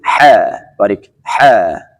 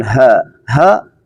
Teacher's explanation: حرف ح از وسط حلق میباشه و حرف ها از آخر حلق میباشه